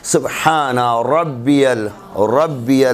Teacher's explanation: را کے اوپر زبر آ جائے گا تو اسے تفخیم سے پڑھنا ہے، منہ بھر کے پڑھنا ہے